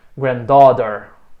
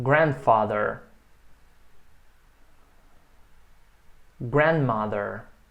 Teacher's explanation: a sílaba tônica é a primeira é o grande